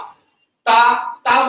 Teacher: ता बोलोगे तो दांत से जीभ टच होगी।